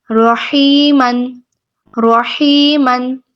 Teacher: یا مدہ ہو رہا ہے. اس کو ہم 2 حرکات لمبا کریں گے.